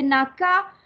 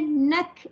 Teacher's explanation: Okey, nampak huruf hamas, dia kalau dia ada baris naka, dia tidak ada hamas ya. Kalau kita baca naka, ka tidak ada hamas, tapi bila kita matikan dia nak baru keluar hamas.